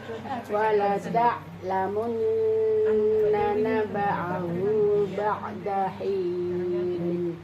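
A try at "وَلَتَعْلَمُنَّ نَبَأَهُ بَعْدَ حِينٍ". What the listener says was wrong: Ini alif itu biasa, jangan dimasukkan. Naba'ahu. Bukan a. Kemudian hinin hanya satu alif, jangan terlalu panjang. Wala ta'lamunna naba'ahu ba'da hinin.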